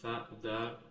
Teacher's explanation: Diucapkan dengan ujung lidah menyentuh ujung gigi seri atas. Si huruf ini tu ee agak sedikit keluar si ininya ee ujung lidahnya agak sedikit keluar dari gigi serinya.